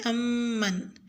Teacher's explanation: آیت نمبر 21 میں لفظ امن میں میم مشدد پر غنہ کریں